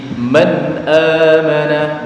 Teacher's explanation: bertemu dengan huruf hamzah ha ha Ain gain koho cara membacanya suara atau bunyi nun sukun atau tanwinnya dibaca jelas tanpa ditahan tanpa di jeda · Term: zhar halqi